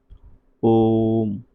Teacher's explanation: दीर्घ स्वर से 3 गुना समय ज़्यादा लगता है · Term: प्लुत स्वर